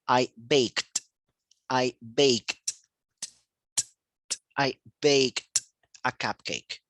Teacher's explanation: Entonces, esto se pronuncia como el presente es bake y el pasado bake no tiene vibración, entonces con un sonido T.